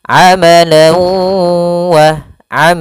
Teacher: Maka dia dinamakan dengan idgham bighunah. Cara membacanya yaitu masukkan tanwin kepada huruf wau dan ditahan.